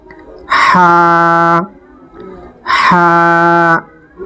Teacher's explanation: কন্ঠনালীর মধ্যখান এখান থেকে এটির উচ্চারণ হয় একটু চেপে উচ্চারণ হয়